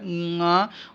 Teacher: ङ वो कंठ और नासिका दोनों से बोला जाएगा। ये अनुनासिक शब्द हैं।